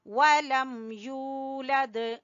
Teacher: یو کو ہم کیوں کھینچ رہے ہیں؟ واو مدہ کی وجہ سے